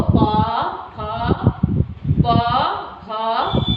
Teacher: प जब हम बोल रहे हैं तो दोनों होठ हमारे सट रहे हैं। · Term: ओष्ठ्य वर्ण